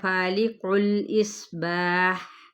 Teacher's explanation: اگر آپ نے وقف کرنا ہے فالق الاصباح, ٹھیک ہے, باح ہا اس طرح سے وسط حلق سے آواز نکالیں, کیسے جیسے ایک پیٹ کو اندر کھینچیں اور پھر اس کی ساؤنڈ نکالیں.